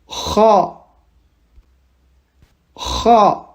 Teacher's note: on sort de l'air mais en rugissant